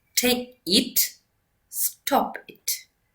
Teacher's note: Short commands pronounced with the low fall alone sound unemotional, calm, controlled